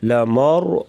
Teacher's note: را ساکن، اس سے پہلے زبر را کو موٹا پڑھیں گے